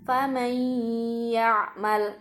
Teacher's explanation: nun sukun bertemu dengan huruf ya, ditekan sedikit kemudian sampai 2 harokat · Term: idgham bi gunnah